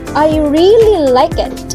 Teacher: you give emphasis on the word really.